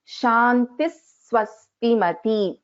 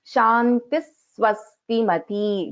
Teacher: You can hear that little bit of stress on Sa here. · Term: visarga followed by sakara